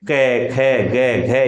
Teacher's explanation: क वर्ग को बोलिए, केवल स्पर्श है, क, ख, ग, घ, इसमें संघर्ष या घर्षण नहीं है।